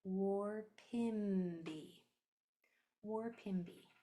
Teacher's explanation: My lips are closed on this third to last sound.